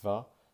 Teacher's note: when I say the, my vocal cords are vibrating to make a voiced sound. And a common error that my students make when trying to replicate this sound is they replace the th with a t, and they replace the with a d.